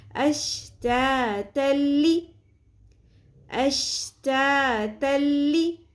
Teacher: جب بھی تنوین یا نون ساکن کے بعد حرف لام یا را یا ارملون میں سے لام یا را آ جائے تو ادغام بغیر غنہ کرتے ہیں، یعنی کہ دو زبر تنوین کو لام کے ساتھ مکمل طور پہ ہم ملا دیں گے، مدغم کر دیں گے اور غنہ نہیں ہوگا، یعنی اس میں جو تنوین کی نون ساکن کی ساؤنڈ ہے وہ نہیں آئے گی. تن تا دو زبر تن یہ جو نون کی ساؤنڈ ہے یہ نہیں آئے گی، تا زبر لام بن جائے گا تل، بالکل بیچ میں سے ساؤنڈ وہ ختم ہو جائے گی.